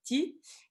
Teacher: consonne antérieure, voyelle antérieure